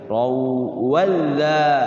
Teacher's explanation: Katsirau masuk dengan gunnah. Gunnahnya itu gunnah bunyi waw ya. Jangan ron wa, tapi raw masuk digunakan wawunya. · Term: idgham bigunna